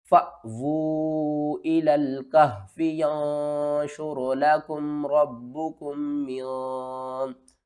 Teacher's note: जब भी अलिफ के ऊपर जज़म आ जाए तो हम अलिफ को झटके के साथ पढ़ते हैं।